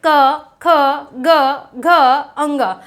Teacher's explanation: हमने देखो यहाँ से का वर्ग को पढ़ेंगे, जैसे ही का वर्ग को पढ़ेंगे तो जो हमारा कंठ है, जो हमारा स्वर निकलेगा, वो कंठ को स्पर्श करते हुए बाहर ध्वनि आएगी। जो प्राण वायु है वो कैसे आएगी, कंठ को स्पर्श करते हुए बाहर आएगी। देखिए वाइब्रेट भी होगा, आप बोल कर देख लीजिए, क ख ग घ अंग, तो ये देखिए बहुत ज़्यादा वाइब्रेट होता है, इसीलिए इसको क्या कहते हैं, स्पर्श कहते हैं।